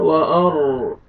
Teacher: را کو آپ نے پر کرنا ہے اور موٹا کر کے پڑھیں گے